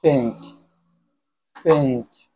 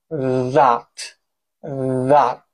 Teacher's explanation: think is voiceless that means you're not using your vocal cord think paint whereas that is voiced you're using your vocal code · Both are fricative dental sound. Fricative means that the passage of the air is difficult but not completely blocked. · You put the tip of your tongue just below the front teeth. But think is voiceless. That means you're not using your vocal cord.